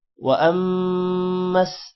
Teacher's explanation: حمزہ میم زبر شد کی وجہ سے حمزہ میم کے ساتھ ملے گا اور میم پر غنہ بھی ہوگا